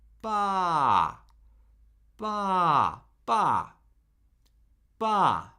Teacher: We start where the first tone lives and then we immediately start decreasing in pitch almost all the way down to the to the low end of the spectrum. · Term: fourth tone